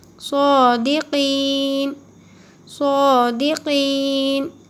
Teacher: صاد کو موٹا پڑھنا ہے